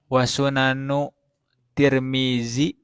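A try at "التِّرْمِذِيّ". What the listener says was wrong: Ini harus ada ya-nya, Tirmidzi terus.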